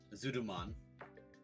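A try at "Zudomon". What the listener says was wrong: It sounded to me like you said Zoodoo-mon, but that was just me.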